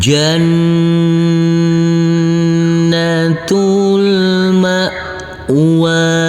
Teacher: Huruf hamzah kecil harus tidak boleh ada aliran. · Huruf nun kita tekan, kita tahan, serta kita dengungkan karena ini adalah bacaan ghunnah. Jannatul. Huruf ta marbutoh ini langsung masuk ke huruf lam.